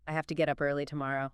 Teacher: Have to often becomes hafta especially before consonant sounds. And get up often blends together to get up.